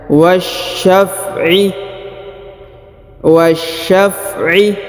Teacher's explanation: Perhatikan huruf waw langsung sambung ke huruf sya yang berharokat tasdid ya, ditahan dan ditekan. Wasyaf'i, wasyaf'i ya, langsung ke sini ya, ke sya yang berharokat tasdid.